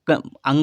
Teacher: अंगा का उच्चारण कंठ के साथ नाक से होगा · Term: नासिक व्यंजन